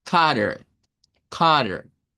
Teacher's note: una T intervocal que nos dice el inglés americano que podemos hacerla como una especie de eres suave